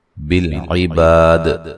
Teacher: جب وقف کریں گے بڑی مد کے ساتھ وقف کر سکتے ہیں اور دال پہ قلقلہ کریں گے، وقفاً اچھی طرح واضح کریں گے دال.